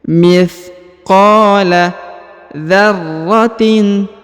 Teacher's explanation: huruf qa dibaca 2 harokat ya, dipanjangkan 2 harokat karena di depannya terdapat alif ya, yang ini ya.